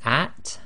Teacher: Notice you have to let a little bit of air through the teeth at the end